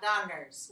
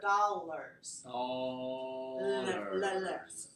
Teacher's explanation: make sure you get your L as an oral sound, not a nasal sound